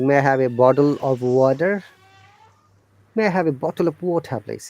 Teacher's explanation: this t becomes d in bottle and water · in american english when there is a vowel sound before t the t sounds like d